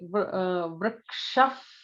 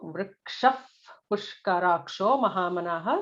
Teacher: The next line is pretty straightforward, except like Vrikshaf, because there is a pa, Pushkarakshaha. So Visarga followed by a pa is an F kind of a sound